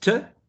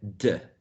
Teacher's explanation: the same place of articulation, and the only variation is voicing